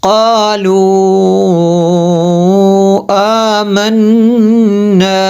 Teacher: آمنا یہاں پہ غنہ کیا نون میں شدت کی وجہ سے